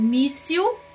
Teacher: eu tenho a sílaba tônica no mi